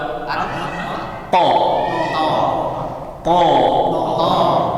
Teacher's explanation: th makhrajnya di ujung lidah ke Pangkal gigi seri atas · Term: huruf th